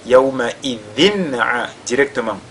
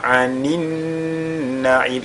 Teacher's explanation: a tanwin suivi de la lettre ayn, on fait ici al-izhar. Donc, yawma idhin directement, n'est-ce pas, sans faire de ghunna.